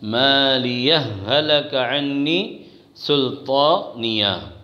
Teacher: کہ مالیہ پر جو ہے اگر وقف نہیں کریں گے، مالیہ کو اگر ملائیں گے اگلی والی آیت ہلک عنی سلطانیہ سے تو مالیہ کی ہا کا ہلکہ کی ہا میں ادغام ہوگا